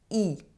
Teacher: Let me show you the importance of paying attention to those with three sounds: [i], [y], [u]. For [i], my lips are stretched, as in a smile. My mouth is almost closed. My tongue is forward and touching my lower teeth.